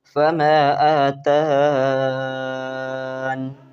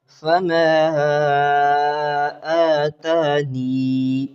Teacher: ہاں یہاں یا کو ثابت کر کے پڑھنا ہے. پہلے بحذف یا ہوگا، دوسرا اثبات یا ہوگا. دونوں انداز سے یہ وقف جائز ہیں.